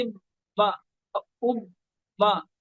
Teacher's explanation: تشدید والا کو دو بار پڑھا جائے گا، اور اس پر آواز روک کر، آواز کو روکنا ہوتا ہے